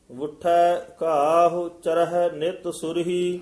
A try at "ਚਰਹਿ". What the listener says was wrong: ਹਾਂ ਚਰਹਿ ਪੋਲਾ ਬੋਲਣਾ। ਚਰਹਿ ਚੜਨ ਦਾ ਵਾਚਕ ਨਹੀਂ ਹੈ।